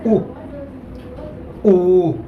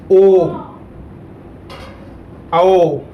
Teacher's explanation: बिना आप ओष्ठ गोलाकार किए आप बोल नहीं सकते इन वर्णों को। तो ये वृत्तमुखी स्वर हो गए।